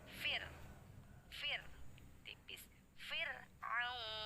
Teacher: Ro sukun didahului kasroh termasuk hukum ro yang dibaca tarqiq atau tipis. Jadi ketika membaca ro sukun yang didahului kasroh, posisi bibirnya tersenyum